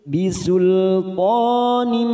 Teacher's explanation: kasroh tanwin bertemu ba, namanya bacaan iqlab, kita tekan 3 ketuk siap masuk pada huruf ba.